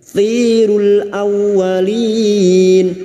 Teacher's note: aw masuk ke huruf wawu, hanya masuk tanpa mendengung, tanpa ditahan lama-lama, hanya masuk. Awwalin, walin bertemu mad dengan huruf hidup yang dibaca waqaf 4 harakat kita panjangkan mad arid li sukun.